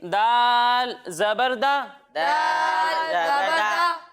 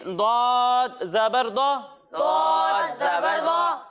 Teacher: ضاد بھی حروف مستعلیہ میں سے ہے یعنی ان حروف میں سے ہے جن کو موٹا پڑھنا ضروری ہے تو اسے ہم موٹا کر کر پڑھیں گے.